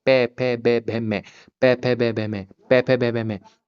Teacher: मतलब हमारे जो ओठ है ना हमारे आगे का हिस्सा मुंह के जो होंठ होते हैं वो आपस में प्रकंपन करेंगे। आपस में टच होंगे। उन्हीं के मेल से हमारा जो पै वर्ग है वो बोला जाएगा। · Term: ओष्ठ